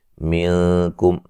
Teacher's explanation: یہاں نون ساکن کا باریک اخفا ہے